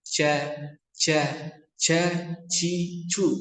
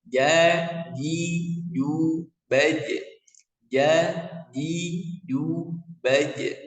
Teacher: Huruf jim ini ya secara makhraj lidah bagian tengah menempel di langit-langit mulut ya. Dan dia tidak ada nafasnya. Tidak menghembuskan angin.